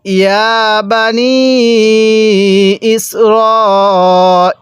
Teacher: বানি ইসরাইলা হ্যাঁ এই র এর মধ্যে কিন্তু চার আলিফটা হবে ইয়া এর মধ্যে যেমন তিন আলিফ টান হবে র এর মধ্যে চার আলিফ টান হবে